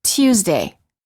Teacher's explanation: Some British speakers often add an extra y sound before the U.